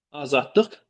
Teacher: D-tıya, L-dıya, Q-da X-ya çevrilibdir.